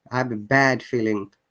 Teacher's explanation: when you're saying bad is a bit longer sound